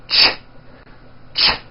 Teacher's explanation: It's a common sound in English. It's a combination of the T sound, t, and the SH sound, sh. When you put these two sounds together, you get a ch, ch. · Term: CH sound